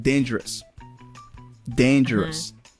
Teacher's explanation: that word has three syllables and the first one is emphasized